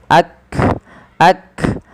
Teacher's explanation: Maka di dalam melafalkan huruf kaf yang berharokat sukun, langkahnya adalah menyesuaikan dengan makhraj dan sifatnya. Makhraj huruf kaf dari pangkal lidah kita